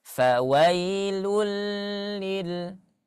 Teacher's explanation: Dia hukumnya adalah idgham bila gunnah, ya. Bila gunnah, tanpa ada dengungan.